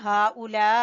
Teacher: مد واجب، اس کی مقدار جو ہے 3 سے 4 الف کے برابر کھینچیں گے